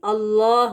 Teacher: اس کو انگلش میں جو لکھا ہوا ہے اسکرین پر دیکھیں، whenever the ayah begins with Allah's name, lam in لفظ الجلالہ is read heavy